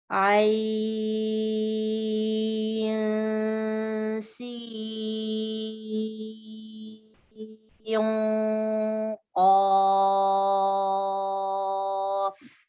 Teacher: आइन सीन का गुन्ना लाइट होता है एंड नून का गुन्ना क़ाफ के साथ में हैवी होता है. सीन के साथ लाइट होगा, क़ाफ के साथ हैवी होगा.